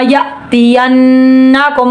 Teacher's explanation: حمزہ میں جھٹکا آئے گا. نون مشدد 1 الف کے برابر غنہ ہو رہا ہے، 1 الف کے برابر غنہ کریں گے.